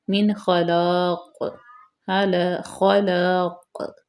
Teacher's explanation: وقف کی وجہ سے نیچے جو دو زیر ہیں وہ ختم ہو جائیں گے۔